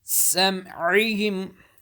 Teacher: Seen, whistling sound. Behind the teeth. Ain, middle of throat.